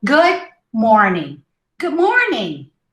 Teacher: gucci morning instead of gucci morning you say good good see you almost don't hear the d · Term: final stops